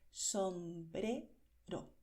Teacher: la R se pronuncia con la punta de la lengua sin expulsar el aire, sin vibrar